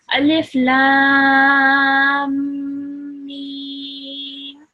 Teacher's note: you need to hold that meme sound in your nose for a bit longer to be able to join the lam and the meme together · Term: meme mushaddad